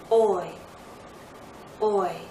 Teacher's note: more open position move into a more closed position oi oi we're moving into e again not a full spread e but close to that